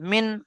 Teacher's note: আমি মিম বললাম না, মিন বললাম, নুন সেকেন্ড পড়লাম। মিম, নুন, জের মিন, বা, আইন জবর বা, মিম, বা, দাল জের দি, মিম বাদি।